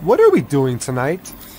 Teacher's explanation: the intonation where we can hear it is on what and doing